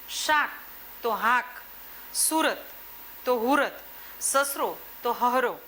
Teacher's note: બરણી તો બૈણી, પારણું પૈણું, સાવરણી હાવણી જેવા શબ્દ પ્રયોગો કરે છે. શ અને સ એનો અઘોષ હ વાપરે.